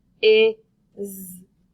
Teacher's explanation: since it's at the end of the word, it's going to sound like a Z and make the Z sound